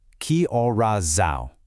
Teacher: the word são has this kind of nasal aw sound right at the end